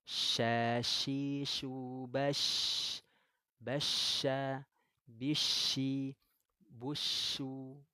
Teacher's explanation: Kalau yang ada titik tiganya, ya ini dia menyebarnya angin di mulut. Ada sifatnya disebut dengan at-tafashi.